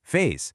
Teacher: The vowel sound in phase is drawn out and noticeably longer specifically because it's followed by a voiced sound.